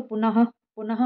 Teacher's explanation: जो विसर्ग का हम उच्चारण करते हैं उसमें अह की आवाज आती है